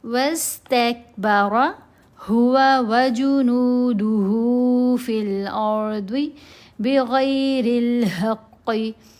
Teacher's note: قاف کو موٹا پڑھنا ہے، غین کو موٹا پڑھنا ہے، ضاد کو موٹا پڑھنا ہے، اور ظا کو موٹا پڑھنا ہے۔ یہ سارے مستعلیہ حروف ہیں۔